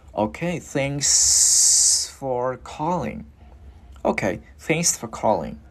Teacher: Cái chữ S này nè, mình đưa cái hơi cho nhiều ra để khi mà mình luyến qua nó rất là mượt.